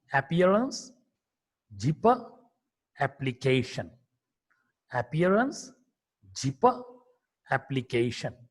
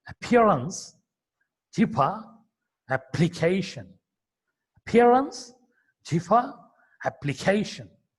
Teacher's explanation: This is the standard Indian pronunciation. We don't aspirate the per sound there. But when it comes to the pronunciation by a native speaker, he pronounces like that.